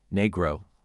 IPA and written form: ˈniː.ɡroʊ (Negro)